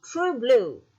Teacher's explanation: true blue, means that the two words are stressed equally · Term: spondy